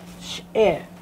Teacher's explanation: SH sound, and then the glottal stop